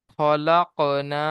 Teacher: একে আলিফ মাদ্দাহ বলে। আলিফ মাদ্দাহকে এক আলিফ পরিমাণ টান দিয়ে পড়তে হবে।